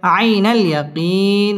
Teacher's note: মধ্যে আরজি তিন আলিফ টান দিয়ে ওয়াকফ করতে হবে